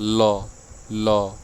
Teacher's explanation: द्वार आपका बीच में बंद हो जाएगा जीभ से ल और हवा क्या होगी दोनों ओर निकल जाती है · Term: पार्श्विक वर्ण